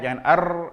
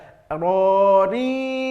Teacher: Agak sedikit ke dalam ujung lidah, tempelkan ke dalam daripada huruf nun, ya. Hati-hati getaran pada huruf ra, tidak boleh, ya, tidak boleh banyak